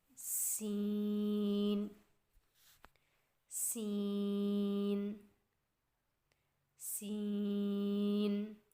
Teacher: سین کی ادائیگی میں زبان کی نوک کو سامنے والے نیچے کے 2 دانتوں کے کناروں سے مضبوطی سے لگا کر باریک اور سیٹی جیسی آواز میں پڑھیں.